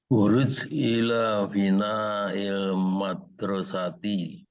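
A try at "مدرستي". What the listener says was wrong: Madrasati. Kita kolkolahnya dibunyiin aja sambil supaya di Al-Qur'annya enak nanti.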